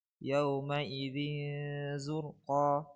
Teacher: تنوين بالكسر مخفى عند زاء مضمومة بغن حركتين